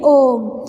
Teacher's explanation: ओम जो है अगर आप इसका उच्चारण करोगे तो आपको 2 मात्रा से ज़्यादा समय लगेगा इसके उच्चारण में, तो ये हमारा प्लुत स्वर का उदाहरण है।